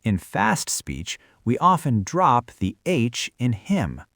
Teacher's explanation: in fast speech, we often drop the H in him. So him just sounds like im.